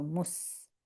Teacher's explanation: The seen is light, you see, because it's seen, not sad. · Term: sin